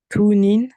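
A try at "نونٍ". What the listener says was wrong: Ouais, juste la première lettre. Il y a une erreur. Ouais, exactement, Nounine.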